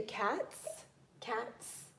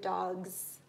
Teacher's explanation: the cats ends with this C-like sound, and dogs ends with the Z.